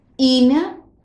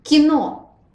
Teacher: Кино, I is unstressed. And you see that in the second word, I is only slightly shorter than in the first word.